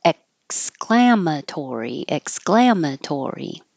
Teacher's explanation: you hold your tongue in the K position so it stops the air flow